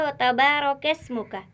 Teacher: हमने पढ़ा है कि रा कभी मोटे और कभी बारीक पढ़े जाने वाले हरफों में शामिल है, और जब रा के ऊपर कोई हरकत यानी ज़बर या पेश हो तो रा मोटी पढ़ी जाती है। यहाँ पर रा के ऊपर ज़बर है तो रा यहाँ पर पुर पढ़ी जाएगी, यानी मोटी आवाज़ में अदा होगी।